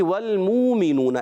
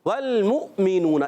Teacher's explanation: اس حمزہ کو پڑھنا ہے، واو کو نہیں پڑھنا ہماری روایت میں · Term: جھٹکا